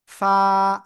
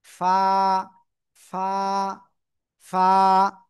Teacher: নিচের ঠোঁটের পেট উপরের দুই দাঁতের আগার সাথে লাগাবো, এই যে নিচের ঠোঁটের পেট উপরের দুই দাঁতের আগায় লাগিয়ে হালকা বাতাস বের করব